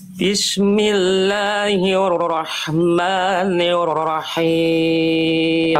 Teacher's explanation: huruf rnya dikurangi lagi sedikit getarannya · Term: huruf ro